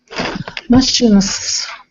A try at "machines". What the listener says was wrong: Machines with a Z sound.